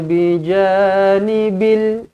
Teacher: Bija ja panjang dua harakat asli